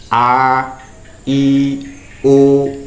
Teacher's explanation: huruf hawaiah a i u h ini makhrajnya ada pada rongga mulut dan tenggorokan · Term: huruf hawaiyah